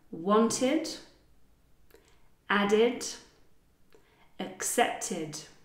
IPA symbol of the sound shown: id